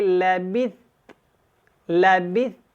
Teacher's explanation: تا کی ہلکی سی آواز نرمی کے ساتھ ادا ہوگی